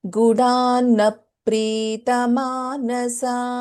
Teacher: So it is like there is double letters here. There is a dvitvam also happening for pa.